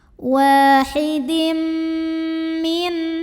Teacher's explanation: Maka tanwin kasrohnya masuk ke mim, lebur, wahidim, dan dengungkan, bunyi M-nya tahan. Wahidim. Nah, ini karena idgham kamil, jadi bawaan dengungnya bukan dari tanwin, tapi melainkan dari huruf yang kedua. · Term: idgham bi gunnah